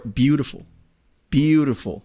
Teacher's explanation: First syllable is emphasized.